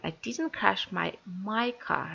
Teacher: The stress word is my car. Not yours, not his, but my car.